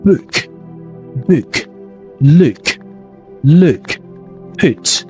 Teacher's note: short rounded vowel is similar to oo sounds but shorter and less tense.